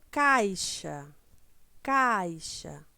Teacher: você abre bem a boca para dizer olá e ue ele o som do I ele já sai mais fraquinho quando você já vai fechando a boca